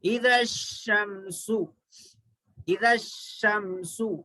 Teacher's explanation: شین حروف شمسی میں سے، دیکھیے یہاں پر حروف شمسی ہے، یہ حروف شمسی، حروف شمسی میں سے شین آیا، تو یہاں پر الف لام کو نہیں پڑھیں گے، سائلنٹ کر دیں گے